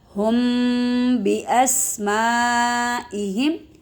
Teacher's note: ہم پر غنہ کریں گے کیونکہ میم ساکن کے بعد با آ گیا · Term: اخفاء شفوی